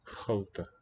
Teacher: It's a length difference where the R has completely assimilated to the ch.